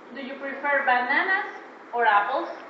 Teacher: Standard, high, standard and high intonation. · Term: Sentences of choice